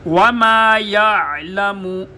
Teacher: عین اور ہا دونوں کو گلے کے درمیان سے ادا کیا جاتا ہے